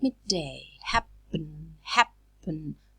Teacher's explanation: lips it's bilabial so the tulips are oppressed together right but when the air is released the soft palate is lowered so the air goes out through the nose